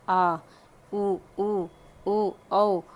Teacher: जिन स्वरों के उच्चारण में जीभ का पिछला भाग ऊपर उठता हो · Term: पश्च स्वर